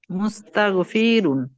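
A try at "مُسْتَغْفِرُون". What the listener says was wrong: ফি টান হবে না, মুস্তাগফিরুন।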